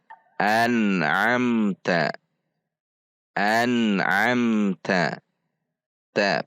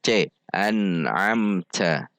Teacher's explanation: Teh ada dorongan udara namun tidak dengan menghembuskannya secara keras